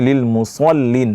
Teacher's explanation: Fawailul lil musallin ini juga dibaca dengan shadnya tadi, ini di shad ini dibaca dengan tebal ya, jangan sampai terbaca seperti sin ya